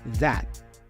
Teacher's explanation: The T for this final that is a stop consonant, so we don't fully pronounce it